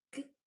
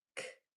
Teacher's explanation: So the hard sounds for G and C are g and k. One is just voiced and one is voiceless.